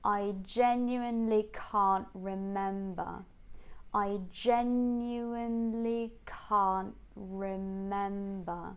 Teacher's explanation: starting a bit lower on I jumping up on gen and then going down on Khan and mem